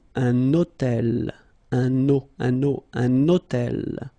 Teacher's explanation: I'm making this little liaison, this little link between the two